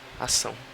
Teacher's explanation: A gente pode ver que na segunda sílaba, são, aparece AO. AO forma um ditongo decrescente, porque o A está tendo a função de vogal e o O de semivogal.